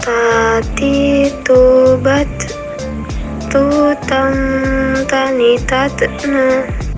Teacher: Menyentuh ujung lidah dengan gusi gigi seri bagian atas dengan mengalirkan sedikit nafas. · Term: huruf Ta